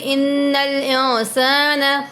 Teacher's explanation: انل پہ جماؤ کریں گے، جب نون مشدد میم مشدد پہ غنہ کر کے پڑھتے ہیں. ٹھیک ہے، نون مشدد ہے تو غنہ کریں گے